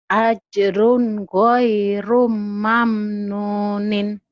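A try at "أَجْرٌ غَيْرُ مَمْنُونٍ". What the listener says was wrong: Ajrun goiru. Jangan digoirum ya, nggak ada tanwin. Ajrun goiru mamnunin.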